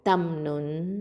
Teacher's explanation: இங்கே நூன் சாக்கினாக்கு அடுத்ததாக த வந்திருக்கிறதுனால இது இஹ்ஃபா பண்ணணும், மறைச்சு குன்னா செஞ்சு ஓதணும். அப்போது தம் நுன் அப்படின்னு மறைச்சு குன்னா செய்யுங்க.